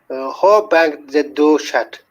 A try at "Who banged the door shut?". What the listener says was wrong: Oh, by the way, not ho. Who? Who sound. Who banged?